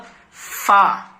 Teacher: اوپر کے دانتوں کا کنارہ نیچے کے ہونٹ سے مل کر فا ادا ہوتا ہے، اور دونوں ہونٹ سے مل کر با میم اور کچھ کھلا رہ کر کے واو غیر مدہ ادا ہوتے ہیں.